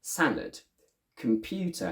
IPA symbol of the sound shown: ə